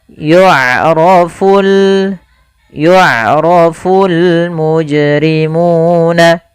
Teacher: Pada lafal bacaan yu'rafu, di sini ain memiliki sifat yaitu sifat bainiyah, yaitu suaranya tidak terlalu dialirkan dan tidak pula terlalu ditahan. Maka ya. Tapi hati-hati jangan dibaca dengan yu'rafu atau yukrafu.